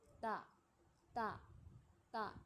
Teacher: ता जो है वह जुबान की नोक ऊपर के दांतों की जड़ पर सख्ती से रखा जाता है और उसमें हमें आवाज का हल्का सा इखराज होता है। · تا جو ہے وہ زبان کی نوک اوپر کے دانتوں کی جڑ پر سختی سے رکھا جاتا ہے